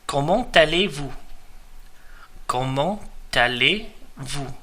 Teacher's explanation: the T from the end of the word comment merges really onto the second word aller.